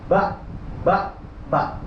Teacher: Ya jadi dia jahar, jelasnya suara dan tertahannya udara. Ketika dilafalkan tidak keluar udara.